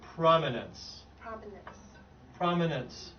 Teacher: know okay great so the word it's actually pronounced prominence yeah so the emphasis is on the first syllable